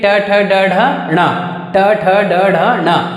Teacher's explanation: जीभ तालु के जस्ट ऊपर मुड़ता है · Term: मूर्धन्य वर्ण